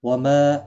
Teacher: ما الف مدہ ہے، ایک الف کی مقدار کے برابر کھینچ کر پڑھیں گے